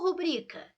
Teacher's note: A palavra é rubrica, então é uma paroxítona e não uma proparoxítona.